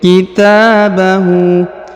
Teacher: Kitabahu, huruf ta dipanjangkan 2 harokat karena di atasnya terdapat alif kecil.